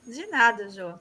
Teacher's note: I love the way the D becomes J sound